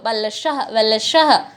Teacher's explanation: यहाँ पे और एक एक्स्ट्रा लॉ हमको, वलशः वलशः, देखिए उच्चारण करके कभी देखेंगे इसको, वलशः डबल लॉ जैसा सुनाई देता है पर हम लिखते नहीं हैं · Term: स्वरभक्ति